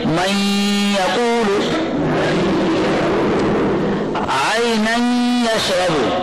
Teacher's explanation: بھی ہوگا، جیسے من یقول لکھا گیا کیسے ہے من یقول، اب یہ نون یا میں مل گیا، ادغام بھی ہو گیا اور غنہ بھی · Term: ادغام مع الغنہ